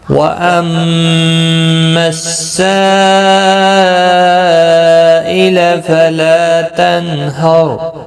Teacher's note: فلا لا الف مدہ ہے، نون کا اظہار ہوگا